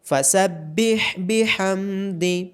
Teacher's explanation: ہا کی آواز گلے کے درمیان سے آئے گی۔